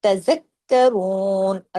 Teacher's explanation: را کو ہیوی بھی کیا، را کو دو حرکات کھینچا بھی